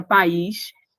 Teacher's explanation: Na palavra país, você observou que o a ficou em uma sílaba e o I em outra sílaba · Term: iato